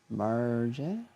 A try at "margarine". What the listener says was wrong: No, there's an extra syllable in there. It's an alternative to butter. Soft G.